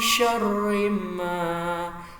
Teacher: agak panjang 2 harokat, ini mad tabi'i bil alif